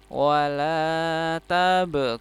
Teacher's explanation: kun panjang 4 sampai 6 harokat, mat arid li sukun, dan nunnya harus disukunkan ya. Walaupun harokatnya fathah ya, harus disukunkan.